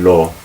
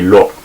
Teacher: But if you want to say it more like probably David would have said it, you could say lo, and you cut it off suddenly at the bottom of your throat